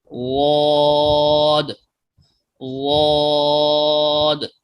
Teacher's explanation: اور زبان کی یہ کروٹ آپ دیکھ رہے ہیں، یہ ساری کی ساری زبان کی کروٹ ہے، اور آگے والا جو زبان کا حصہ ہے یہ زبان کی نوک ہے۔ اب زبان کی یہ کروٹ دائیں طرف سے ہو یا بائیں طرف سے، جب یہ 5 داڑھوں سے ٹکراتی ہے زبان کی کروٹ، تو اس سے ضاد ادا ہوتا ہے۔